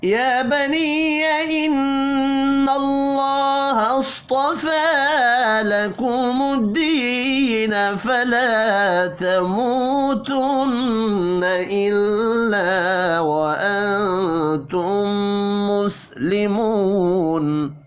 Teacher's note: یا کے اوپر کھڑی زبر ہے، ایک الف کے برابر کھینچ کر پڑھیں گے